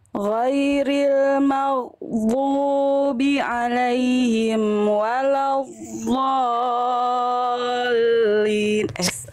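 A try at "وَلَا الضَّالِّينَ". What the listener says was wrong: Sekali lagi boleh diulang sekali lagi, tadi agak bocor dotnya, jangan keluar nafas ya. Ngalir suara dan istitolah saja. Ghairil maghdubi alaihim waladdallin.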